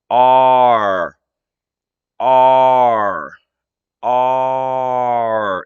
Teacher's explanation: r is going back into your throat a little bit so the sound comes from your throat but your tongue is helping because it's coming back